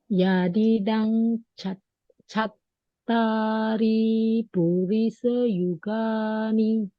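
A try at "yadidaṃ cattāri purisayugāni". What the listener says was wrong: Yes, better, but you drag the ri. The ri is short.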